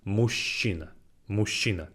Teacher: this sh sound, мужчина, is a bit longer